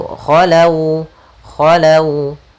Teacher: Yaitu lembut dalam pelafalannya. Dan huruf waw makhrajnya adalah kita majukan sedikit bibir kita untuk menyempurnakan daripada huruf waw itu